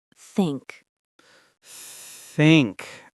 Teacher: you have to stick your tongue out between your teeth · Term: th sound